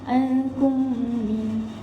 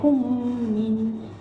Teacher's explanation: kita boleh membacanya dengan membunyikan dengung beserta merapatkan kedua-dua bibir kita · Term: idgham syafawi